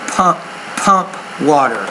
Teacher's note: You're not pronouncing your P with enough air.